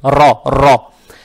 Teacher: Теперь буква «ра» с фатхой. Фатха приобретает оттенок «о». «Ра» читаем твердо, то есть «ра», «ра».